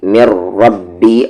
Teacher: میم پر تشدید آ گیا، آواز کو ناک میں رکھیں گے تھوڑی دیر، غنہ کریں گے، یعنی کہ می کو را میں مر، یہ نون سائلنٹ ہے کمپلیٹلی.